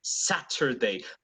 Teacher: T in initial in the initial position or in any position if you're British you're always going to mark the T